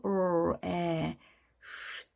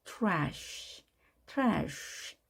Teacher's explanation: r은 혀끝을 오므렸죠. 이렇게 오므려주고 입술은 앞으로 더 나왔죠.